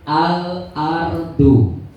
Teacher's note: Kalau Al-Qamariyah bunyi L-nya tidak hilang